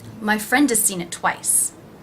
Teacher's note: The word has is pronounced without the H, and again the vowel sound is reduced to the schwa.